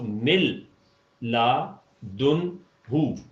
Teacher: نون جو ہے وہ جوڑ میں آپ نے دیکھا کہ بالکل ہی نہیں آیا · نون کا وجود ادغام کامل کی وجہ سے ختم ہو جائے گا